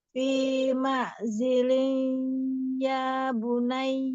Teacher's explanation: tapi kurang dengung sedikit lagi ditanwin ketemu ya. Coba masukkan ke hidung.